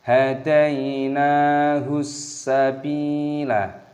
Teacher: Sabila, ba dibaca panjang, ada ya sukun, panjangkan selama dua ketukan. · ciri khasnya adalah huruf berikutnya memiliki tashdid. Maka kita masuki, kita idghami, membacanya sebagai hadainahus. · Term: mad thabi'i, idgham syamsiyah